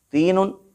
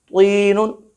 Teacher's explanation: تینن باریک آواز کے ساتھ، طینن بھاری آواز کے ساتھ